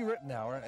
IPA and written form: ˈrɪtnaʊər (Ritenour)